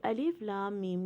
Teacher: لام کے اوپر 6 کاؤنٹ کی مد ہے